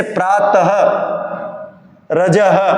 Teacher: विसर्ग का जो उच्चारण है ये होता है अह के समान